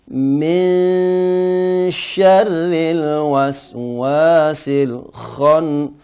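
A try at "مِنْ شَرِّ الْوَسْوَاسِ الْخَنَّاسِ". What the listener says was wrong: Huruf kho, hati-hati jangan ho, tapi kho, ngorok ya.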